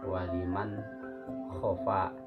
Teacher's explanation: Jadi nunnya itu dibaca jelas, nun matinya dibaca jelas. Itu pembacaan ijhar.